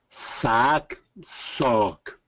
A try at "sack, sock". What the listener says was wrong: Good.